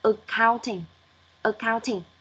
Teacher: nó lại giảm ở âm đầu và lên ở âm số 2